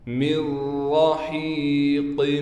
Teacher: اس میم کو ڈائریکٹ ہم اس را سے ملا دیں گے۔ را پر زبر ہونے کی وجہ سے را کو موٹا بھی پڑھا جائے گا اور را پر تشدید ہونے کی وجہ سے را پر تھوڑا ٹھہراؤ کریں گے۔ ہا کے بعد یا ہونے کی وجہ سے ہا کو 1 الف کی مقدار کھینچیں گے۔